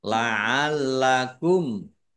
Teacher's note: mim sukun bertemu dengan huruf lam bacaan izhar syafawi dibaca jelas lam tasdid dibaca dobel ya lamnya dibaca dobel ada tasdid nya.